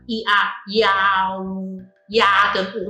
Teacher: You can pronounce ia first, and the u is a round lip, and the lips are pursed, iau .